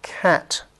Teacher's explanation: The back of the tongue makes contact with the velum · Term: Velar